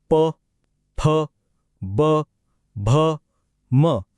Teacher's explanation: ओठ हा गट आहे ओष्ठ हे ओळखायला सगळ्यात सोपे आहेत कारण दोन्ही ओठ एकमेकांना चिकटल्याशिवाय हे आवाज निघू शकत नाहीत